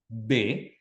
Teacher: La pronunciamos juntando los labios de arriba con los labios de abajo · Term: la B larga